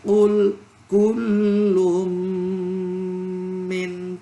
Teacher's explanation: qaf di pangkal lidah